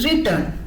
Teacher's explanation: അവിടെ റീ അൺസ്ട്രെസ്ഡുമാണ്, ടേൺ ആണ് stress ചെയ്യുന്നത്. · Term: അയംസ്